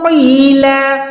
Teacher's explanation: قوف کو یا کے ساتھ ملائیں، قوف موٹا ہے۔ لام 2 زبر پہ ہم رک رہے ہیں تو یہ لام کھڑی زبر ہو جائے گا، یا ہم سمپلی کہیں کہ ایک زبر گرا دیں گے، قیلا۔